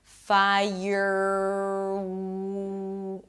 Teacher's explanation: if you lift the tongue up if you keep it up because of R it's gonna sound hollow and weird